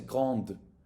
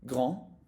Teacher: But when the adjective becomes feminine, you will add an E and then you will hear the D.